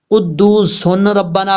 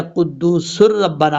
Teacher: یہاں پر ادغام تو کریں گے لیکن غنہ نہیں کریں گے